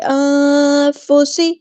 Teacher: نون کے مخرج پہ زبان نہیں لگائیں گے ، زبان اسٹریل نیچے رہے گی، پھر کہتے ہیں فا کی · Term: اخفا